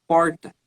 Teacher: dificilmente tu veria um manezinho colocando na fala dele, né, esse R retroflexo.